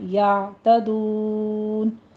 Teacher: یعتدون میں عین کو وسط حلق میں لے جائیے اور سٹاپ کرنا ہے، یہاں پہ جھٹکا نہیں دینا